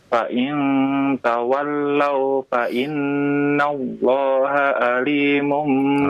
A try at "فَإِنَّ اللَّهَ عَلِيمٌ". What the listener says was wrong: Ainnya, Pak. Fa inna Allah alimun ya.